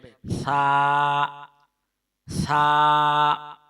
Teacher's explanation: যেহব্বা বের করে উপরের দাঁতের আগার সঙ্গে লাগিয়ে উচ্চারণ করতে হবে